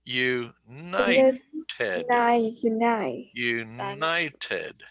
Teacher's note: Emphasis on the second syllable. Okay. We have 3 syllables, united, and the accent is united.